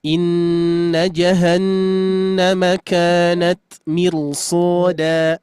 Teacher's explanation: Nah, haknya huruf ro ini harusnya tipis dikarenakan sebelumnya kasroh. Tapi dikarenakan bertemu dengan huruf sod, huruf isti'la, maka menjadi tafkhim, menjadi tebal.